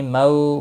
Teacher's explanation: مو واو لین ہے، تھوڑا نرمی کے ساتھ کھینچ کر ادا کریں گے